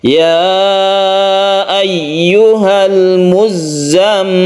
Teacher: ada tasydid za yang harus kita tekan ke za-nya, kemudian tasydid mim yang harus kita dengungkan, kita panjangkan.